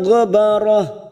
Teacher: Ghabarah kita baca pendek, ujungnya kita rem